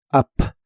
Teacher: la u de Up se pronuncia como una a explosiva